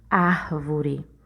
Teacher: A palavra árvore, a sílaba tônica dela é o ar, né? Quando você fala a palavra árvore, observe que você demorou mais na sílaba ar.